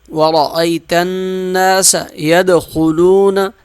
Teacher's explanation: دال قلقلہ کریں گے، خا موٹا پڑھیں گے